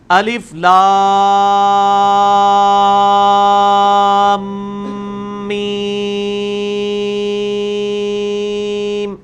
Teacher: یہاں پہ میم والی غنہ آ گئی ہے. لام کو میم سے ملانا ہے کیونکہ تشدید ہے، اور پھر اس پہ غنہ تھوڑا سا کر کے پھر میم کو بھی 5 الف تک لے کے جانا ہے